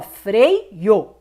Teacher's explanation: quando você fala freio, você percebe que esse I se apoia no E. · Então, como aqui é um ditongo, ó, freio. O O é separado, mas o E e o I não.